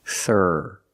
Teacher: The first sound is a TH with no voice. It's just air. Put your tongue on the back of your top teeth and just make a little air.